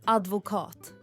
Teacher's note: med betoning på sista delen